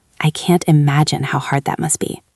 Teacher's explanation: Focus on the word imagine and hard. Give them a little more length.